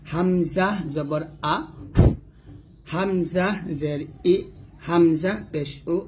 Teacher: যেমন হামজা জবর আ, হামজা জের ই, হামজা পেশ উ, এটা নর্মাল হবে, নর্মাল আমরা ভাবে। কোথা থেকে উচ্চারণ করবো, হলকের শুরু থেকে।